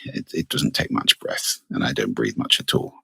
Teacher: So it's all about breath, really. If I don't breathe very much, I can get in vocal fry like this.